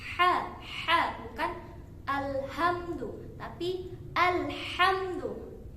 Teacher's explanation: Ha memiliki makhraj yang sama dengan huruf ain, yaitu di wastul halqi, yaitu tenggorokan bagian tengah. Nah, ketika mengucapkannya harus ada penekanan di tenggorokan bagian tengah.